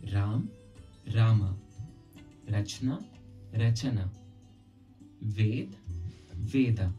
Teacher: Notice how Sanskrit adds an A sound to the end of each letter, while Hindi does not. Almost like there is a halant on the end of each letter. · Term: shwa